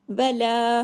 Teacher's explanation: हमने ला को दो हरकत खींचा है।